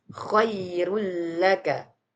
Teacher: khairullaka tidak boleh didengungkan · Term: tanpa dengung